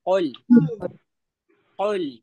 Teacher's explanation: काफ काफ का मखरज को हलक के जड़ से जो आपके जबान की जड़ होती है ना वहां से उसके मुकाबिल ऊपर के तालू से टच करिए